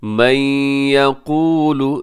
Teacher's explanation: नून साकिन के बाद या यरमलून का इदगाम गुन्ने के साथ